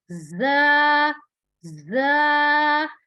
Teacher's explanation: ज वर्ड जो है उसमें थोड़ा सा सख्ती से और सीटी की आवाज आनी चाहिए।